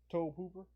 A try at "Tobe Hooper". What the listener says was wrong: No, just Tobe. You don't pronounce the E.